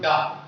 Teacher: ठीक है, वर्ग आ जाएगा मूर्धा, उच्चारण स्थल हो जाएगा मूर्धन्य, यानी इनके उच्चारण करते समय जो हमारी जीभ वो क्या होती है, मुड़ जाती है। जैसे आप उच्चारण करो डा तो जीभ आपके लिए अंदर की ओर मुड़ जाती है